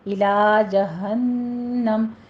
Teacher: हा अक्से हलक से मोटी आवाज़ के साथ अदा कीजिए और नून मुशद्दद है, गुन्ने वाजिबा करना है, 2 काउंट करने हैं